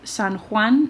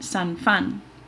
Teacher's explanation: a veces hay confusión entre el fricativo velar y el fricativo labiodental. Por ejemplo, San Juan se convierte en San Fan.